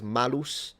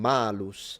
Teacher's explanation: The only reason why in the Vulgate in Latin it became the apple is because you can create a little bit of a double, not a joke, but like a double meaning, because malus and malus, they sound almost the same, the only difference being the length of the vowel, and it can mean apple or evil.